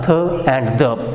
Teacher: So place of articulation is dental and tongue. So tongue moves towards the direction of teeth, it touches the back side of the teeth and the sound produced are th and the.